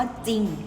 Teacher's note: เวลาอ่านออกเสียงพยัญชนะนะคะจะออกเสียงตัวหน้าเพียงตัวเดียว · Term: อักษรควบไม่แท้